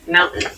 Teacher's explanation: Keep in mind when you pronounce this word in fast speech, it sounds like mountain. The T sound is reduced.